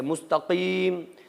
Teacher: مستقیم قاف زبان کی جڑ سے